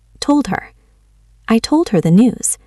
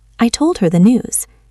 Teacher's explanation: The H in her disappears. Told ends with a D. It connects.